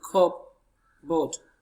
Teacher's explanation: We have our stress on the first syllable, which is cup.